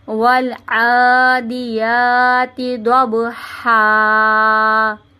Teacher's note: عین کو کھینچیں گے، یا کو کھینچیں گے اور ہا کو کھینچیں گے، باقی کسی الفاظ کو نہیں کھینچنا